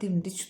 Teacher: Zərf kimi işlənəndə vurğu düşür birinci hecaya.